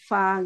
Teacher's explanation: Fa harusnya ada ada nempel gigi seri atas itu menyentuh bibir